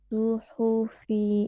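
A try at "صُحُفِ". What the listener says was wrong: Su. Bibir ngangkat ya, si rahang bibirnya maju ya, si suaranya diangkat. Bukan su. Jadi maksudnya ngangkat suara tuh gini. Nah, jadi maksudnya mengangkat suara tuh nanti kerasa ya pada saat kita melafalkan.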